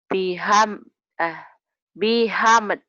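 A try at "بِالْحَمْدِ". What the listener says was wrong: Bil dulu atuh. Bil hamd. Bil hamd. Bil hamd.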